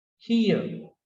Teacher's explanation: This r is weak and generally it is not pronounced